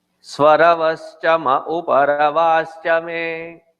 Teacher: While chanting this mantra, there are certain times wherein the me becomes ma.